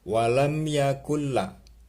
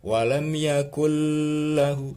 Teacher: Maksudnya suara nunnya masuk ke dalam lam, tidak usah dengung. Sebentar saja maksudnya. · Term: idgham bi ghairi gunnah